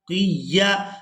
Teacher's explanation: क़ाफ को या मुशद्दद के साथ सख्ती के साथ मिलाएंगे